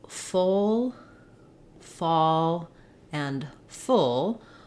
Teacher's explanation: all of these are rounded back vowels